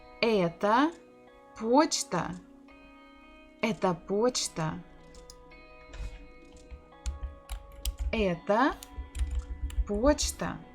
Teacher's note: in the first word это, the stress is not on O, so we must pronounce it as A. Почта, почта, the second word, O is under the stress, it is stressed, so we have to say it as it is.